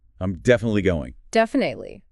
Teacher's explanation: That middle I can be soft, like a schwa.